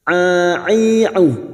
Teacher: huruf ain memiliki sifat tawasud dan jahar, jangan samakan dengan hamzah ya.